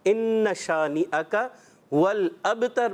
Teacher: با میں کلکلا بھی کریں گے